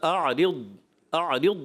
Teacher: اعرض یعنی ضاد میں کلکلہ نہیں ہوتا